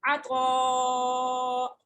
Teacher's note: عین زبر ع، طا الف مد زبر طا، بڑی مد ہے مد متصل، اس کو 5 فنگر اسٹریچ کریں گے ہم، تو طا اور الف دونوں کو موٹا پڑھیں گے